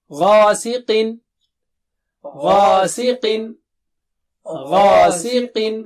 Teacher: غین موٹا اونچا ہے استعلا والا حرف ہے